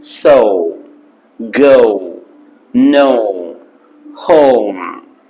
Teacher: O sound and oo sound should come together as in so go.